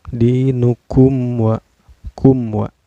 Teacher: Cara bacanya mim sukunnya dibaca secara jelas ya, gak boleh dengung dan gak boleh memantul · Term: izhar sapawi